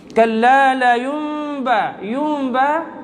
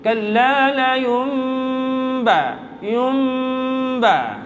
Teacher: Yumba dibaca dengan sedikit dengung, pada kadar 2 harakat juga dengungnya.